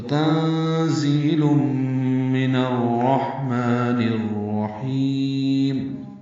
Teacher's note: ہا ساکن پہ ہم سے میم کو 2 حرکات لمبا کریں گے. نون کو الرحیم کی را سے ملائیں گے، یہ بھی ادغام شمسی ہے، را پر پڑھیں گے